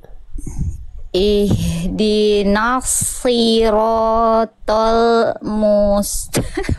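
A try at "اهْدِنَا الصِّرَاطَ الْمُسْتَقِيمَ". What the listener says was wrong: Putus-putus. Jadi, jadi ragu-ragu begini ya.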